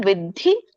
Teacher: ವಿದ್ಧಿ ಮಹಾಪ್ರಾಣ ಇದೆ ಒತ್ತು